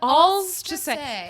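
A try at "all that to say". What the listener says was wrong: the S, like it's not like you're saying all of that to say. You say alls to say, and it sounds like you're like a 1940s mobster.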